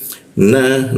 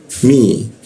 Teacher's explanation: na posisinya pakai ujung lidah di bawah hidung dia